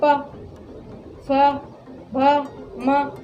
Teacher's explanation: ये पूरा ओठ के बिना आप नहीं बोल सकते इसको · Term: ओष्ठ